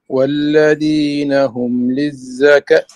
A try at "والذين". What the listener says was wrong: لا لا أنا ذال ذال وليست فيها صفات الدال. لا الذي ذي ذي حرف من طرف اللسان من خلف السناء. الذي